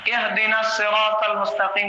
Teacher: اہدنا الصراط المستقیم، اہدنا الصراط المستقیم جب ہم پڑھتے ہیں تو ہا جو ہے گلے کے نچلے حصے سے ادا ہونا چاہیے